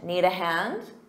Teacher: notice you do the rising intonation to make it sound like a question